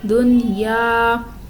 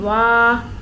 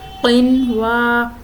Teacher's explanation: تو حروف یرملوم ایک کلمے میں آنے کی وجہ سے ادغام نہیں بلکہ اظہار مطلق ہوگا، اس لیے ان میں غنہ نہیں کرنا